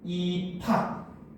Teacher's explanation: 비읍과 히읗이 만나가지고 피읍이 되더라는 거죠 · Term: 거센 소리